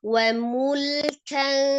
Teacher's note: Hati-hati lam sukunnya ya. Tidak dipantulkan mule, jangan, tapi tidak juga terlalu ditahan mul gitu kan.